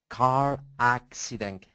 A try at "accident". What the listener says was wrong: Accident. It's the short A, okay?